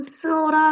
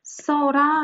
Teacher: 어간에 있던 의가 완전히 탈락하고 이건 음가가 없으니까 이렇게 합쳐져서 써라가 된 거예요. 자, 이처럼 의로 끝나는 용언의 어간과 모음으로 시작하는 어미가 올 때 이 의가 탈락하는 현상을 우리는 의탈락이라고 합니다